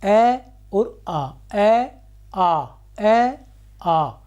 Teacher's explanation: अ और आ अ आ अ आ किसी चीज की जरूरत नहीं हुई। सीधा कंठ से इसका उच्चारण हम कर सकते हैं।